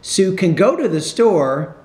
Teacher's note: when it's positive you have to put more stress in the main verb